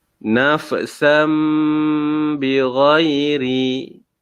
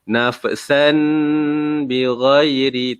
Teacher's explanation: Dia bukan san tapi sam. Jadi kita kita menggantikan tanwin ini dengan huruf mim. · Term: iqlab